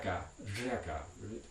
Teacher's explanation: unusual voiced alveolar fricative trill